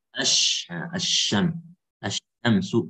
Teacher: Nah, idghamnya sini idgham kamil ya. Jadi dia tidak ada sisa sifat di lam, langsung ke shin.